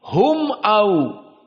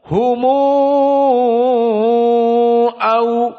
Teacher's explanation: Namun qiraah Wars dibaca dengan dhammatul mim dan isba 6 harokat. Maka dibaca humu au seperti itu.